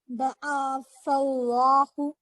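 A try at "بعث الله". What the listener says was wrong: عین پہ زبر ہے، حرکت ہے کہ حروف مدہ ہے؟ جی حرکات کیجیے، پھر تھوڑا کھینچ رہے ہیں آپ. جی بعث اللہ حروف مدہ لفظ اللہ پر ہے نا کھڑا زبر، تو اس کو تھوڑا سا کھینچیں گے. بعث اللہ.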